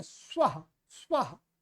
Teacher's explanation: स्वाहा नहीं है भाई, स्वः। ये अ ह्रस्व अ है, जिसको छोटा अ बोलते हैं।